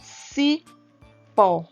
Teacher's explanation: quando falamos cipó pronunciamos o pó com mais força então nesse caso aqui a última sílaba é mais forte também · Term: oxítona